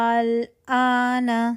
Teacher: ایک ہی لفظ میں الف مدہ کے بعد سکون اصلی آ رہا ہو اور اس کو ہم 6 کاؤنٹ کھینچیں گے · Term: مد لازم کلمی مخفف